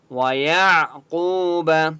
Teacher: واو مدہ ہے، قاف کو ایک الف کی مقدار کھینچ کر پڑھیں گے، اور قاف کو موٹا پڑھیں گے